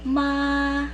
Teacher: So it's a high and level tone. So to master that, just try to prolong it. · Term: first tone